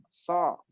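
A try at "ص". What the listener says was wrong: So nggak boleh monyong. So. Nggak boleh monyong. harus diam. Nggak boleh monyong. Mulut nggak boleh monyong.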